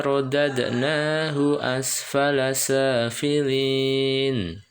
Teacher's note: dad ini qalqalah sugro ya